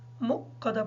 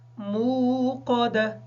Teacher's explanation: اچھا، اس کو اکثر جو ہے مقدہ پڑھا جاتا ہے، واو کی جگہ حمزہ پڑھ دیا جاتا ہے، جبکہ یہ واو ہے